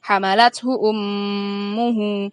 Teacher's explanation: Hamalathu ummuhu merupakan bacaan gunnah karena ada mim bertasydid